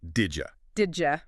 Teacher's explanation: The D at the end of did and the Y at the beginning of you crash into each other. It becomes didja.